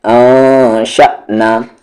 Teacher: جھٹکے کے ساتھ حمزہ ساکن ہے